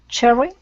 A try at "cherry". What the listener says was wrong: Cherry. Instead of cherry, okay, use less of an oo sound, more of an r. Cherry.